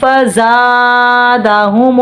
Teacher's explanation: دو پیش کے بعد حرف اخفائی میں سے فا آ رہا ہے، آواز کو ناک میں چھپا کر پڑھیں گے. زا سیٹی والا حرف اس میں سیٹی کریں گے. الف مد اور ہے، الف سے پہلے زبر آ رہا ہے، ایک الف کے برابر کھینچیں گے.